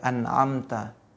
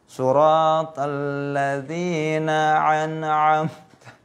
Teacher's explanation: A yang pertama hamzah, A yang kedua itu ain. Jangan sama semua.